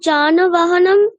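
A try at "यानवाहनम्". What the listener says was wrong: ঠিক, যানও নয়, উচ্চারণ কি হবে? ইয়ান, ইয়ান বাহনম।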